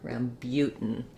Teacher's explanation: the spelling is ram but um so you can see how the second syllable has the clear ooh vowel and actually it has a glide